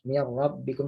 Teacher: Getarannya ro tetap ditampakkan, namun mereka jaga kadar dari getarannya tersebut.